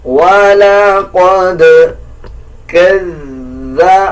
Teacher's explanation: دال کے اوپر جزم ہے, قلقلہ کیا جائے گا